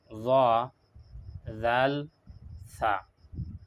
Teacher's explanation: জিহ্বার আগা, সামনের উপরের দাঁতর কিনারা, এখান থেকে আদায় করা হয় জ, জাল, সা।